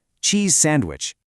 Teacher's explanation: Cheese ends in a voiced Z sound and sandwich starts with an unvoiced S sound. Because your mouth is in the exact same position for both of those sounds, you just bridge them without stopping the airflow.